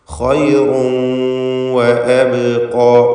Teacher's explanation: റായിൻ്റെ തൻവീൻ ശേഷമുള്ള വാവിൽ ലയിപ്പിച്ച് മണിക്കണം.